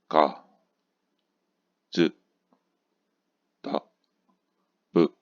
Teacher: 근데 오늘 배울 타금은 유성음이에요. 그래서 앞에 있는 G, Z, D, B를 발음해보면 가, 즈, 다, 브 해서 앞이 떨리는 걸 알 수 있어요. 성대가.